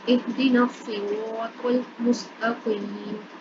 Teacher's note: یہاں پر یا مدہ ہو رہی ہے، یا ساکن سے پہلے زیر ہے، تو اس وجہ سے اس کو لمبا کریں گے